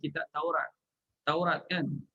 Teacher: Kitab Taurat. Taurat kan? Ra tu dah jadi nipis.